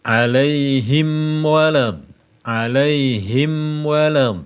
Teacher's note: dua bibir dikatupkan lalu mengeluarkan udara melewati khaisyum rongga hidung Ya khaisyum itu rongga hidung alaihim wad alaihim wad ya alaihim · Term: makhraj mim